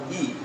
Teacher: जीभ और तालु के बीच से हवा को निकालेंगे तो हमारे मुख से निकलेगा ई। · यदि हमें ई बोलना है तो हम पूरा कंठ नहीं खुलेगा, ई बोलते समय वो आवाज़ हमारी जो है तालु के पास आकर दबेगी